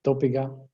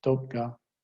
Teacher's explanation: You have a choice either to add that epenthetic vowel, dopiga, in order to preserve your syllable structure, or to just drop it , dopga, I have a shorter word, but with sort of